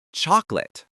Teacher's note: That final syllable is quick and weak. · The key here is that the middle O and the ah sound completely disappear into a quick sound, or sometimes vanish completely. It's chocolate.